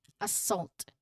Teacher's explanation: Emphasis on the second part.